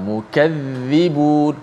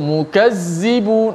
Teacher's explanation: hujung lidah itu mesti dikeluarkan sedikit di bawah gigi kacip atas itu. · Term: huruf dha